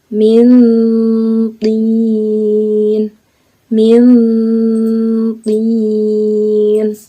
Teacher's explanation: suara yang dihasilkan nanti dari ikhfa aqrab ini nantinya mendekati bunyi n, dan suara berdengung lalu ditahan 2 harokat atau 2 ketukan.